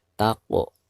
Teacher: Perhatikan huruf qaf. Huruf qaf berharakat sukun sekaligus posisinya ada di tengah-tengah bacaan. Maka dihukumi qalqalah sugro dan dibacanya harus dipantulkan dengan suara pantulan